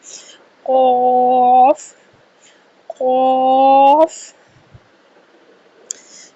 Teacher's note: قاف حروف مستعلیہ میں سے ہے۔ قاف کا مخرج زبان کی جڑ اور تالو کے نرم حصے سے قاف کی ادائیگی کی جائے گی۔ 2 2.5 الف کے برابر اس کو ہم نے لمبا کرنا ہے، اور قاف، الف اور فا 3 حروف کا مجموعہ ہے۔